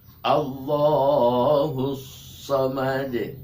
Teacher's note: Qalqalahnya ini karena di akhir kata atau akhir kalimat, setiap di akhir itu namanya qalqalah kubro, lebih jelas dibanding atau dengan qalqalah sugro.